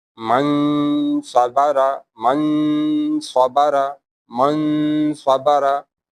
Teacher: We will hide noon sakin or tanween in nose. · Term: ikhfa